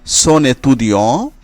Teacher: তারপরে মনেকোল, এখানে এন এবং এ এর সাথে সন্ধি হয়েছে মনেকোল। সোনেতুদিও, এখানে সো এর এন এবং এতুদিওর এ এর সাথে সন্ধি হয়েছে